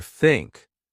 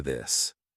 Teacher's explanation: Put your tongue between your teeth. Push air out for think. Add voice for this.